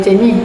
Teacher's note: Jika kita lihat, perkataan jenis mengalami perubahan apabila disebutkan oleh informan dari Terengganu, iaitu pada akhir katanya huruf S bertukar kepada H